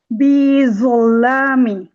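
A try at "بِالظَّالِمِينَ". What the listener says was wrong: না, জ চলে আসলো। বিযল্লামিন।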